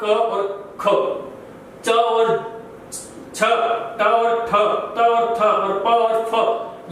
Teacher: इन ध्वनियों को उच्चारण करने पर या तो गूंज कम होगी या नहीं होगी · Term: अघोष